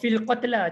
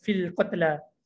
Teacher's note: yang sepatutnya kita panjangkan fi, dia tak bunyi. Dia terus masuk kat alif lam.